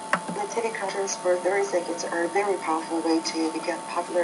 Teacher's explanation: you're using more of an even monotone that also makes it difficult to understand your ideas.